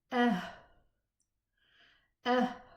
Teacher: So there's no sound. It's the vocal cords are so widely open that the air is just, you know, running with no vibration. So you can't hear any voice.